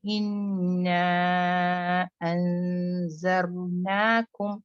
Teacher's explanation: زال بالکل tip of the ٹنگ، دانتوں پہ لگے